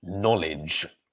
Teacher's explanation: So the silent K at the beginning, the consonant sound at the beginning of this word is n, knowledge. And EDGE at the end of the word is pronounced idge, knowledge.